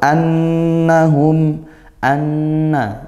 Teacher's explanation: nun bertasydid ghunah ya. Hum mabutun hum mim sukun bertemu mim.